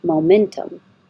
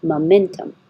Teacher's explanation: you can say with a good Mo momentum or because the mo is not stressed you can change it to uh momentum very hard to hear because when it's not stressed it'll also